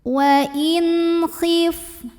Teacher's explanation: Wa in ada hukum izhar halqi karena ada nun sukun yang menghadapi huruf halqi atau huruf tenggorokan yaitu kha. Maka nun sukun kita bunyikan dengan jelas. Bunyi n-nya jelas, tidak perlu ditahan. Wa in khif, fa-nya berangin ya karena salah satu sifat dari fa ini adalah mengeluarkan angin atau hams dari segi udara.